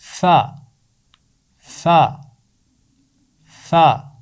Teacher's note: اس کا مخرج ہے اوپر والے دانت نیچے والے ہونٹوں سے لگ کر فا کی آواز نکلتی ہے. اوپر والے دانت نیچے والے ہونٹوں سے ملیں گے تو اس کی آواز نکلے گی فا.